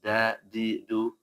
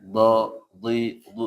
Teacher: jangan dibaca tafkhim atau tebal tipis saja ee misalkan yang dal ee da di du jangan sampai kayak do di du misalkan ini yang tebal tetap ini salah tapi dia aslinya tipis Baik, lanjut.